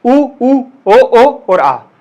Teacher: पश्च स्वर मतलब वो स्वर जिनमें तुम्हारी जीवान का पिछला हिस्सा काम करता है, पीछे वाला, अभी कैमरा घुसेड़ दूं, क्या कर दूं, ठीक है, ऊ ओ और आ, ये बोलोगे तो तुम्हारी जीवान का पिछला हिस्सा सक्रिय रहेगा, वो ज्यादा हिलेगा डुलेगा, ठीक है।